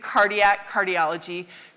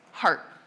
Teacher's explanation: And there was a set of sound changes in Germanic languages, so in English, that will have changed that consonant. So a k in Indo-European, which you'll still see in Latin and Greek, cardiac, cardiology, became h in Germanic, heart